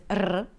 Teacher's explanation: The R in Arabic is 'rrr', right, a trilled R.